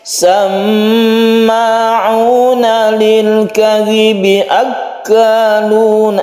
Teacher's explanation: Samma'una ini adalah tasydid mim yang kita kenal dengan gunnah musyaddadah. Gunnah karena dia itu bertasydid, kita dengungkan membacanya, kita tahan ketika dia itu bertasydid.